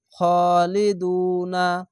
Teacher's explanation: পেশের পরে সাকিনে এক আলিফ টেনে পড়বেন